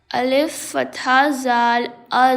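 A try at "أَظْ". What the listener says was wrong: No, this is not zal. This was zal. This is za. And you have to produce whistle sound in this letter. Alif fatha za az.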